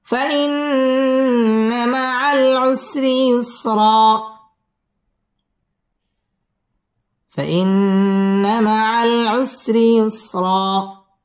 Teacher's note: فإن واجب গুন্না, فإن مع العسر র বারিক হবে, ইউসরা র পুর হবে এবং এখানে এক আলিফ টান দিয়ে ওয়াকফ করতে হবে, কারণ দুই জবরের বামে যদি ওয়াকফ হয় তাহলে এক আলিফ টেনে পড়তে হয়।